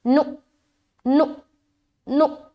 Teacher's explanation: नु में झटका देंगे क्योंकि यहाँ पर हमज़ा साकिन है, और जहाँ कहीं भी पूरे कुरान शरीफ में हमज़ा के ऊपर सुकून आ जाए, जज्म आ जाए, तो वहाँ पर झटका देना है।